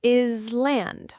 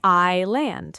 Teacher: that S is completely silent